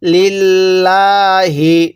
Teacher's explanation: আল্লাহ শব্দের লামের পূর্বে জের থাকলে আমরা লামটাকে চিকন করে পড়বো